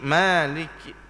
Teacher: Baik, maka kata dia lagi juga nipiskan mim maliki itu. Masa kita baca maliki, ma tu sendiri kena nipis. Jangan beri jadi tebal maliki yaumiddin.